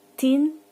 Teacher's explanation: the alveolar plosives T is voiceless · One pair of voiceless voiced plosives is articulate with the tip of the tongue contacting the alveolar ridge just behind the upper incisors. You can feel this for yourself if you run the tip of your tongue backwards from your upper incisors and up over the roof of your mouth.